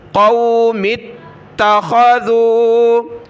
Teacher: یا ربی ان قوم اتخذوا، قاف یا زبر قو، میم کو تا کے ساتھ ملایا، میم کو ڈائریکٹ تا کے ساتھ، یا کو نہیں پڑھنا۔ قوم اتخذوا، تا کو سخت کیا تشدید کی وجہ سے۔